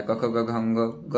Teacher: क ख ग घ वाला कंठ से हो जाता है।